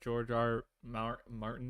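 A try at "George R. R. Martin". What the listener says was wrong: Two R's. George R. R. Martin.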